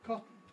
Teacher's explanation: We have a process that I call syllabic consonant formation, which says that an underlying sequence of schwa plus N turns into a syllabic N in certain circumstances, one of which is after T at the end of a word